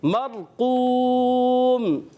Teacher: اور واو مدہ ایک الف کھینچیں گے